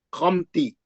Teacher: इजहार शफी हो गया, बगैर गुन्ने के मीम को जाहिर करेंगे।